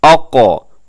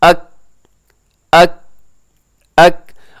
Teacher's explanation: وہ زبان نیچے رہتی ہے, زبان کی جڑ نیچے رہتی ہے, نرم تالو کے ساتھ ٹچ ہوتی ہے. لیکن جب آپ کہیں گے اک تو یہ کیا ہے کہ آپ کی جو حصہ ہے زبان کی جڑ کا وہ اوپر سخت تالو کی طرف آتا ہے. اب 2-3 دفعہ اگر اس کو بولیں گے اس طرح تو آپ کو دونوں کے درمیان جو ڈفرنس ہے آسانی سے آپ کو سمجھ آ جائے گا.